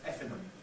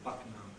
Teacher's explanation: the station announcer often pronounces it with an alveolar nasal as Effingham, because it falls into this category of ing.